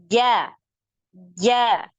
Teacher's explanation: Lidah, tengah lidah kita itu naik sampai di langit-langit itu sampai nempel. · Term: jim